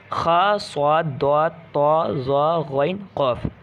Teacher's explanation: ये हर्फ जब भी आ जाए, यानी इन पर कोई भी हरकत आ जाए तो ये हमेशा क्या पढ़े जाएंगे? मोटे, यानी पुर पढ़े जाएंगे। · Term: हुर्फ़ मुस्तालिया